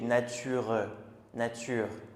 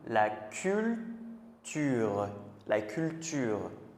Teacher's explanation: si on décompose le mot, on va entendre le E. Mais quand on parle rapidement, on n'entend pas.